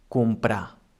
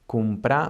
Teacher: if we have one R after a consonant, it also sounds soft, as for example in the verb comprar.